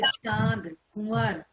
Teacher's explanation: इसका उच्चारण स्वर के साथ नाक और मुंह दोनों से होता है। अनुनासिक हम जब बोल रहे होते हैं तो नाक और मुंह दोनों से इसका उच्चारण होता है।